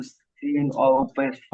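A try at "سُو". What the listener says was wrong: হয়নি হয়নি হয়নি। ভাই, সিন যে অক্ষরটা আছে তিন আলিফ পরিমাণ টান এই অক্ষরের, তিন আলিফ পরিমাণ টান দেন।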